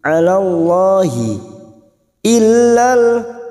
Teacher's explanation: lam jalalah yang didahului fathah kita baca tafkim